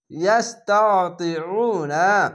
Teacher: ইয়াস্তাতিউনা, পেশের পাশে অসাকিন এক আলিফ টেনে পড়বেন এবং আইনটিকে একটু মোটা করে গলা চিপে পড়তে হবে। জের পাশে ইয়াসাকিন এক আলিফ টেনে পড়বেন।